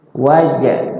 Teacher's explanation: jim bersukun adalah qalqala. Jimnya dipantul.